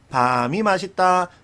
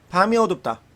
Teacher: 먹는 밤은 길게 발음하고 장음, 낮과 밤 할 때는 짧죠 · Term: 소리의 길이